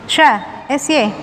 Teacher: sya angin menyebar dengan kuat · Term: tafashi